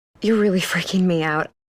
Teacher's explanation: we only have one R sound linking these two words.